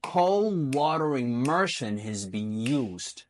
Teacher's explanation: So that has been is not pronounced strongly, it's pronounced softly, whereas used, being a main verb, has to be prominent.